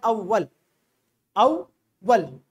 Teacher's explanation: वहां पर वाव को 2 मरतबा पढ़ा, पहले अलिफ के जबर के साथ अव, और फिर अपने जबर के साथ वल। अब यहां पर देखें शद आया तो पहले इस हरकत के साथ अपने पहले वाले लफ्ज की हरकत के साथ, और दूसरी मर्तबा अपनी हरकत के साथ अपने बाद आने वाले लफ्ज के साथ मिलकर।